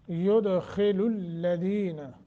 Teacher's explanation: यानी तफखीम, युद दाल पे कलकला करके, खा को मोटा करके